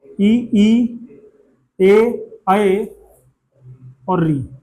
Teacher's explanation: जीभ के अगले भाग का ही प्रयोग होगा इनके उच्चारण में। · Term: अग्र स्वर